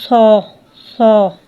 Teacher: صاد کے اندر صفت استعلا بھی ہے، صفت اطباق بھی ہے، اور صفیر میں سے بھی ہے